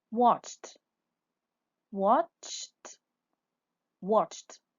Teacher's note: We pronounce the ed at the end. T. Why? Because the verb ends with the sound ch.